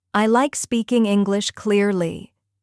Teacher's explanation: Hear how the stress falls on like English and clearly.